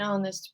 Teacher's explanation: That H is silent in honest.